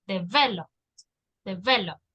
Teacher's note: En la segunda E está la intonation.